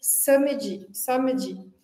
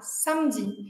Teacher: Então, se a gente fosse ler isso no português, a gente diria samedi, samedi. No francês, esse A, antes de um M e um N, não é necessariamente nasalizado. Então, aqui não é esse fecha com a boca, o lábio mais arredondado, é o A mesmo, o A aberto, né?